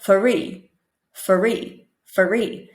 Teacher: with the cluster fr for at the beginning of the word it might sound like you put in a small vowel sound like an uh or an e or a o in between